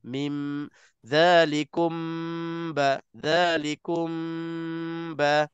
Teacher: mim mati bertemu dengan ba tak ada masalah terus rapatkan sebab mim bibir ba pun bibir kedua-duanya kedua-duanya keluar daripada dua bibir mulut kita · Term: Ikhfa Syafawi